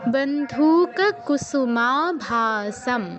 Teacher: মা আকার আছে, ভাতেও আকার আছে, সাতেও আকার আছে, তিনটাই দীর্ঘস্বর হবে।